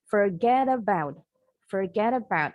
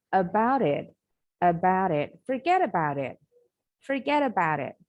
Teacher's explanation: Nah, jadi huruf T-nya ini bunyinya seperti D cepat. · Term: flap T sound